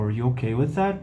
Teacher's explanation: e aí você dá essa subidinha no final porque é uma pergunta de sim ou não. Pergunta de sim ou não, a gente tem essa rising intonation, essa entonação crescente.